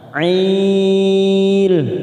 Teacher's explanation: Ail karena kita wakaf di sini kita panjangkan 4 harokat